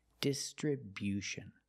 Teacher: make that y-yu sound after the b